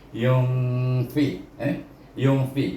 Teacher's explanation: Kalau yun dah jadi izhar, dia baca antara izhar dengan idgham, iaitu bunyinya yung · nun punya dengung tadi tak sampai pada nun, tapi dia nak pergi kepada huruf, iaitu fa, huruf perut bibir bawah. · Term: ifa hakiki